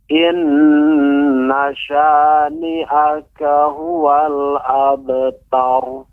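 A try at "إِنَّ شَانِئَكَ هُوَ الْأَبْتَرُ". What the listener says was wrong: Iya. Bagus Bapak bacaannya. Untuk pengucapan ro tebal sudah bagus ya.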